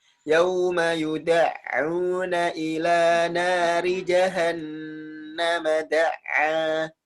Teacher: ketika nun tasydid, jangan terburu-buru ya, disempurnakan dulu gunnahnya, nah, kemudian dilanjutkan